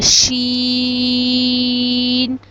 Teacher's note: جب ہماری زبان کا درمیان اوپر تالو کے درمیان میں لگے گا تو شین ادا ہوگا. شین کو بھی ہم 5 الف کے برابر لمبا کرتے ہیں